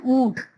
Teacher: اونٹ میں نون کی آواز زیادہ نہیں آ رہی، اس لیے نون غنہ ہے. لیکن اس میں کیونکہ درمیان میں آ رہا ہے اس کا شوشہ یہ، اس لیے اس میں نون کا نقطہ لگ رہا ہے.